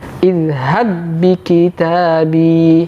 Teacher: Jadi tidak ada lagi qalqalah pada huruf ba yang pertama. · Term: idgham mutamathilain